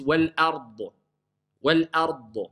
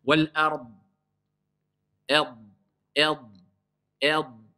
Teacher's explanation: J'ai prononcé le da, mais je l'étouffe.